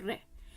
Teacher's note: आपके ऊपर वाले दांतों की जो जड़ होती है ना वहां पर आपकी जीभ टच होती है